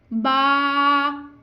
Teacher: बा दोनों होंठों के तर हिस्से से अदा होता है। बा होंठों से अदा होने वाला लेटर है, फर्स्ट लेटर है, जिसको हमने होंठों से अदा करना है।